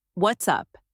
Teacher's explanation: Let your tone rise to show interest and energy